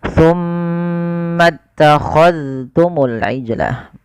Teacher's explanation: jangan diidghamkan ke huruf ta, tapi zalnya ditampakkan dengan jelas